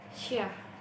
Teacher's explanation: konsonan sya, yang merupakan konsonan frikatif palatal tak bersuara